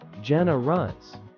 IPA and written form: ˈdʒɛnərəs (generous)